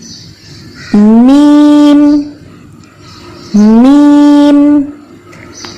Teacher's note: ہمارے دونوں ہونٹ آپس میں ملے اور پھر ان کی جدائی کے ساتھ آواز پیدا ہوئی